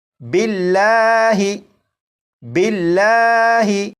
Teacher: لفظ اللہ کے لام کو باریک پڑھیں گے۔ جیسے یہاں پر آپ دیکھیں یہ لفظ اللہ لکھا ہے اور یہاں پر لفظ اللہ کے لام سے پہلے با کے نیچے زیر ہے، اس لیے یہاں پر لام کو باریک پڑھیں گے اور اسے پڑھیں گے باللہ باللہ۔